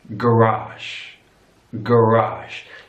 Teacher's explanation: so your stress is on the last syllable